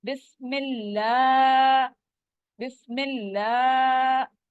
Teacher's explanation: अल्लाह के नाम के ऊपर खड़ी जबर है, वो कितने स्ट्रेच करना है, हमने 2 काउंट स्ट्रेच करना है, यानी 2 फिंगर्स अपनी खोल के हम कहेंगे बिस्मिल्लाह बिस्मिल्लाह।